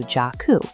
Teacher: The exact same thing happens with a name like Jack. You can't just end on a hard K sound, so you have to reach for a Ku block, turning it into Jakku.